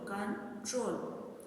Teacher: stress falls on the last syllable ट्रोल